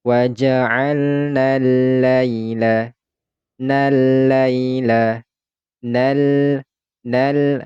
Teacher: kemudian di sini ada huruf lam yang memiliki tanda tasdid maka ini huruf nunnya langsung lompot kepada huruf lam